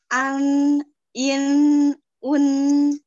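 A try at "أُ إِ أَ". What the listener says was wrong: Itu sama yang pertama yang jelas. Gimana? Ditebal.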